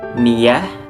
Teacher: Jadi cara membacanya bila diwaqaf maka huruf ta ini berubah menjadi huruf ha yang diwaqaf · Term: tak marbutoh